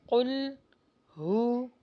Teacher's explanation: قل، قاف کا مخرج ہیوی لگائیے، قل ہو، واو پر ہونٹوں کو گول کیجیے